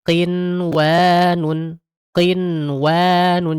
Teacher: prakteknya itu dia nggak tebal sebagaimana kita mengucapkan huruf ko, ya, huruf gho, huruf kho, nggak seperti itu. Tapi dia agak senyum sedikit, ya. Ini prakteknya qinwanun, qinwanun, jangan qinwan, jangan qinwan, nggak boleh. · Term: tafkhim nisbi